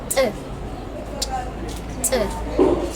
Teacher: The next one is the alveolar ejective, which sounds like T.